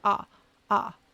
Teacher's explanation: the W doesn't actually make a sound it's just the ah ah so it's just an ah just a vowel with no consonant at the end